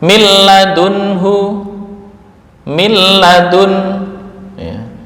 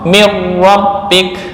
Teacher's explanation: Asalnya min ladun menjadi mil langsung sempurna. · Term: kamil